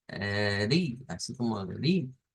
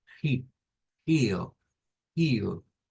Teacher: lo que aparece es la pronunciación con la R francesa o la R uvular